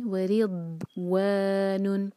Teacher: ضاد پر سکون، ضاد پر جھٹکا کبھی نہیں آ سکتا، ورنہ یہ دال کا ساؤنڈ دے گا اور اس کا میننگ چینج ہو جائے گا۔